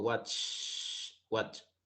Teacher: si yo me tocó la garganta con mis dedos o la voy a sentir que mis cuerdas vocales no vibran cuando le hago watch watch Entonces en ese caso debo de pronunciarlo con una t